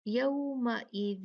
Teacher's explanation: اب یہاں دیکھیں تا ہے تو یہاں پہ تا جو ہے یہ حروف اخفا میں سے ہے تو ہم یہاں اخفا کریں گے 2 کاؤنٹ